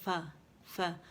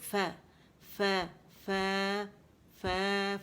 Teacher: اچھا، اس میں نا آپ لوگوں نے کیا کرنا ہے کہ جبڑا کھولیں گے، فا فا، فا نہیں بولیں گے، ف باریک ہے